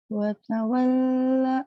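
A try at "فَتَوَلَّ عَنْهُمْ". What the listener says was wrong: Hei, kok watawalla? Itu fatawal Lahnya dibaca. Bukan fatawal anhum, fatawala. Lahnya ketinggalan Kakak.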